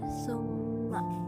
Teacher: ada mim bertanda tasydid dan cara membacanya dengan dengung serta ditahan 3 harokat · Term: gunnah